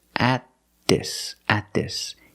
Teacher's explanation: Use a stop T and link the sounds.